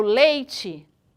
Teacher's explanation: de fala observem a palavra leite tá quando eu falo leite o e ele é muito mais forte que o i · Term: semivogal